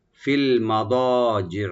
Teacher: ফিল মাদাজে মা open থাকবে, আর দোয়াটাকে deep করে একালে টানবেন, জি জি, জিমটাকে রাইট দিবেন, আইনটাকেও রাইট দিবেন।